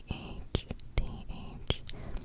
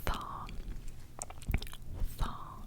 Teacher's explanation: you're not going to feel any vibrations so you're not really using your vocal cord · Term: nonvocal letter